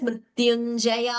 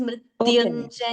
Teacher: we should not prolong it as मृत्युञ्जया, it is मृत्युञ्जय.